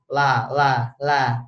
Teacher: la harus digusi gitu ya la la la tapi enggak bolehb kan jadi la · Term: huruf la